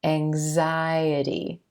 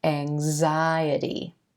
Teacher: Here our X is coming right before the I as in white vowel sound that's emphasized in this word.